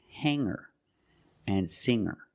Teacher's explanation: I don't pronounce the G sound. It's just the nasal linked together